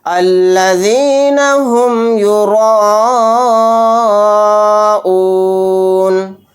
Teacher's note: الذین هم یراؤون، تو یہاں پر دیکھیں الف مدہ کے بعد حمزہ اسی کلمے میں ہے، تو یہاں پر مد متصل کا قاعدہ ہوگا، اور اس مد کو 4 الف کی مقدار کھینچ کر پڑھیں گے